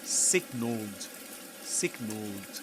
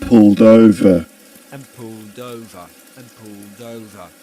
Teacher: But the thing is that in the word signal, in the simple past, you pronounce the ending, the ed ending as d.